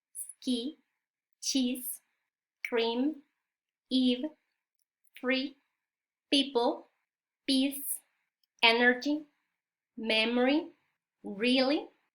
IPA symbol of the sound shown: i: